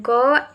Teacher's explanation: Velar contact between the tongue and the soft palate.